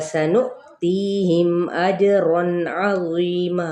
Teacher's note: سین پہ سیٹی کو واضح کریں گے